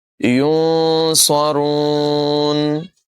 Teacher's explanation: نون ساکن میں اخفا کریں گے، غنہ کر کے پڑھیں گے، صاد کی ادائیگی بھی پر ہوگی اور را کو بھی پر پڑھیں گے